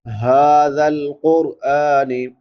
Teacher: ھذا القرآن، ہا کے اوپر کھڑی زبر ہے، کھڑی زبر کھڑی دیر الٹا پیش کو ایک ایک الف کے برابر لمبا کرتے ہیں، اور یہ بڑی ہا ہے، حلق کے آخری حصے سے ادا ہوتی ہے جو سینے کے ساتھ ملا ہوا۔ زال نرم حروف میں سے ہے، تین حروف جو نرمی سے ادا ہوتے ہیں، سا، زال، وا، تو اس کو نرمی سے ادا کریں گے۔